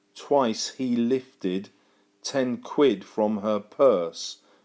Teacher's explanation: trochaic that means that the first syllable is stressed and the next syllable is unstressed · he starts with a stress and he ends with a stress